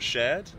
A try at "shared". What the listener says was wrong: Mm-mm, not shared. Cause that sounds more like shirt,